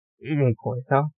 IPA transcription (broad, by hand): iŋko